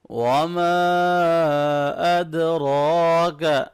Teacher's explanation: وما چھوٹی مد ہے اس کو تھوڑا سا کھینچ لیں، اد دال ساکن پہ قلقلہ ہوگا، قاف طا با جیم دال، یہ 5 لیٹر جب ساکن ہو تو ان پہ قلقلہ کرتے ہیں، آواز کو تھوڑا سا ہلا کے پڑھتے ہیں، ٹھیک ہے۔